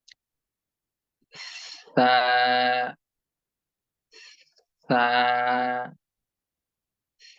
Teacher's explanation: জিহ্বার আগা সামনের উপরের দুই দাঁতের আগার সঙ্গে লাগাতে হবে আলতোভাবে অনেক বেশি শক্ত বা জোরালো ভাবে নয় কারণ আমাদেরকে ভিতর দিক